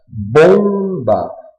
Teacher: quando pronunciamos por exemplo a palavra bomba o om sai com som nasal um som só